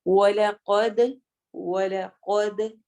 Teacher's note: وَلَقَدْ، وَلَقَدْ، و ادا ہوگا ہونٹوں کو گول کرنے سے، قاف کو موٹا پڑھیں گے، ہیوی کر کے پڑھیں گے. دال پہ قلقلہ ہوگا، قلقلہ یعنی آواز ہلتی ہے، اور دال کی آواز ڈبل کر کے آتی ہے، پلٹتی ہے، اسی لیے ہم اس کو پڑھیں گے وَلَقَدْ، د کی ساؤنڈ ہوگی.